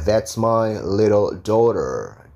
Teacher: Tapi kalau karena diapit suara O sama E, berarti daughter. T-nya jadi D, daughter.